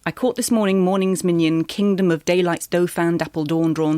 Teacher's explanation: You hear the heavy stresses almost as a musical principle. So the first line there has 10 syllables, the second has 16, but they both have five beats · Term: sprung rhythm